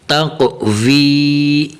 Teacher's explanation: یہاں قوف کو تھوڑا سا قلقلہ بھی دینا ہے، ٹھیک ہے، قلقلہ کی آواز بھی نکلنی چاہیے اور قوف کو موٹا بھی کرنا ہے